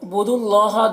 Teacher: بود اللہ دال کو اللہ سے ملا کر پڑھیں گے اور اللہ کو پر پڑھیں گے، اللہ کے لام کو، اور کھڑا زبر ہے جو الف مدہ کی طرح ہے۔